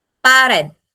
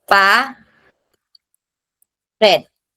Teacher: The stress naturally falls on the last syllable.